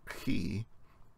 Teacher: Some people, especially English speakers, have trouble pronouncing he, the ch sound, because it's made back in your throat. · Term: guttural C-H sound